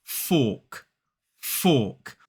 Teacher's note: we don't pronounce the R in this word in a modern British RP accent